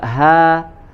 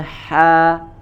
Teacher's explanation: Nah, ini juga nih yang harus hati-hati antara ha dengan ha. Ya, coba ha di aqsal halqi ya, kemudian yang satunya ha ya di bagian wasatul halqi. Jangan sampai ya, jangan sampai dibaca dengan huruf H, atau sebaliknya yang huruf H dibaca menjadi huruf H ya.